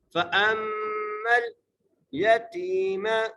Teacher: میم پر غنہ کرنا ہے اور میم کو لام سے ملانا ہے